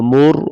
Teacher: را ساکن اس سے پہلے پیش ہے تو را کو موٹا پڑھیں گے